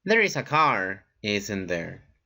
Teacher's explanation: if your intonation goes down it's just to confirm information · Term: falling intonation